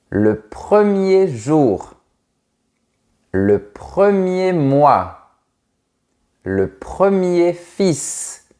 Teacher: On ne prononce pas la lettre R du mot premier